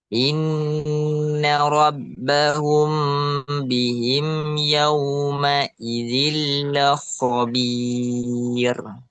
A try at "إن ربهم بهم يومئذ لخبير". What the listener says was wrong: Nah, ro yang sebelumnya sukun, sebelumnya domah, nah itu masih kurang tebal ya. Jadi jelaskan lagi rohnya.